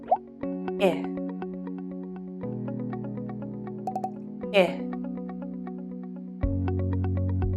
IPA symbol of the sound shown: ɪ